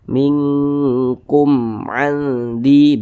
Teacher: Nah, maka kan dia izhar dibaca jelas, tidak berdengung, baca pendek saja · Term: izhar syafawi